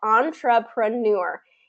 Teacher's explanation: the word stress is in the final syllable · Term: final syllable stress